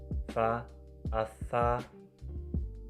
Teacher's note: Fonem F, cara artikulasinya frikatif dan letak artikulasinya labiodental.